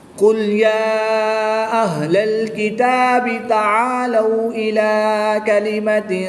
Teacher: کھڑی زبر کے بعد حمزہ دوسرے کلمے میں ہے تو یہاں پر مد منفصل ہوگی، 2 سے 3 الف تک کھینچ کر پڑھیں گے۔